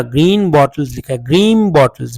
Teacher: और ग्रीन को ग्रीन नहीं लिखा, ग्रीन बॉटल्स लिखा है, ग्रीन बॉटल्स, because the word next word is, the next sound is ब। उस ब की वजह से ये न जो है एन की साउंड म में चेंज हो गई है।